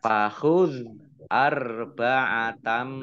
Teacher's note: fathah tanwin bertemu dengan huruf mim, bacaan idgham bi gunnah masuk dengan mendengung, yaitu mendengung mim ditandai mimnya ada tasdidnya.